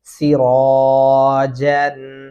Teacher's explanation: یہاں پہ آپ نے سیرا باریک نہیں پڑھنا، را موٹا پڑھیں گے